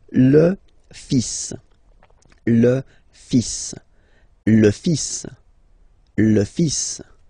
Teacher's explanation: even if you've got this L, well, basically you don't pronounce it, and then strangely you pronounce the final S.